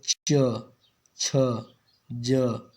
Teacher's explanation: तालू को अग्र भाग ना यहां पर क्या कर रहा है जीभ का अग्र भाग कठोर ताल को स्पर्श करता है तालव्य व्यंजन कहलाते हैं